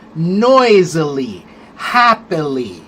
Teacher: Those are three syllable words where you put the accent on the first syllable